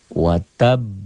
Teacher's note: Wataba dihentikan jadi watab. Tuh qalqalahnya ya. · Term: qalqalah kubro